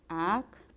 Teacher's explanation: La abierta está en el medio y lleva acento. pero no quiere decir tilde, no te confundas. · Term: triptongo